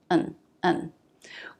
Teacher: Unstressed, it reduces to the schwa